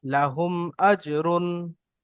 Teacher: হামজা এসেছে, তাই মিম মিমকে, সাকিনকে তাই মিম মিমকে সাকিন বলুন, মিমকে বা মিম সাকিনকে বিনা গুণায় জাহির করে পড়তে হয়